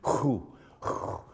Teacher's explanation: The ku is not really ku, it's hu, hu, Hu is a kind of guttural.